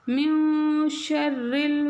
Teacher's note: நூன் சாக்கினுக்கு பிறகு ஷீன் வரும்போது இந்த இடத்துல நூன் சாக்கினை மூக்கில் மறைச்சி ஓதணும்.